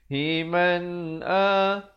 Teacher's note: Lafz jalalah dibaca nipis 2 harakat. Himan a, bunyi saja man terus masuk a, izhar halqi, jangan dipanjangkan